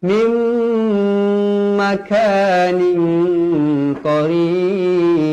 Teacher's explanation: Nun kosong bertemu min idgham ma'al gunnah, dibaca dengan dua harakat.